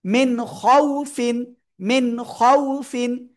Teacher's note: লিনের হরফ তাড়াতাড়ি পড়তে হয়, কোনো টান হয় না।